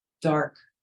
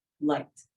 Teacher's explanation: when you say the word dark, your voice drops. When you say the word light, it seems to flow up.